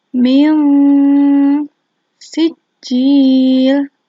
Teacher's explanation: Nun sukun dibaca samar. Samar itu bagaimana? Tidak jelas dan tidak juga dengung. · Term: ikhfa